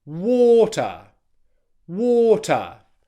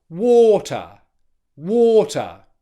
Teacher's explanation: The first syllable, because it's stressed, should be louder, longer, higher in pitch, and produced with more force. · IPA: /wɔː.tə/